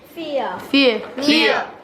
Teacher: The blended vowel /ē + ãr/ sound can be segmented and is made up of two sounds. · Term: diphthong